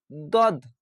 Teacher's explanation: উপরের মাড়ির দাঁতের গোড়ার সাথে লাগিয়ে উচ্চারিত হয় এরকমভাবে দদ মোটা অক্ষর দদ এভাবে পড়বেন।